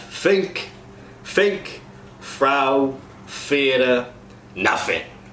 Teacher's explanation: the voiceless TH sound, the moves to an F. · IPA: [θ]